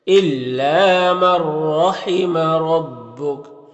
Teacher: نون کو را سے ملا کر بغیر غنہ کے پڑھیں گے، اس کو ادغام تام کہتے ہیں۔ رائے مشددہ کے اوپر زبر ہے تو را کو پر پڑھیں گے، پر را کے اوپر زبر ہے تو پر پڑھیں گے۔